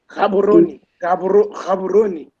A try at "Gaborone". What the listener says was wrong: Gaborone, yeah, but just a little bit more, also toward the K sound. Gaborone. It's more like a KH.